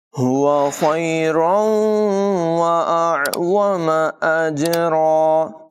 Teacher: ہا کو حلقے نچلے حصے سے ادا کریں گے